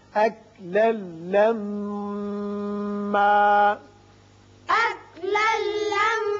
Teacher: لام کے اوپر 2 زبر تنوین ہے، آگے لام آ رہا ہے، لہذا ادغام ہوگا بغیر غنہ. میم مشدد ہے، اس کو بھی غنہ کے ساتھ پڑھیں گے.